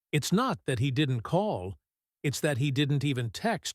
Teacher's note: Listen to the stress on the words call and text.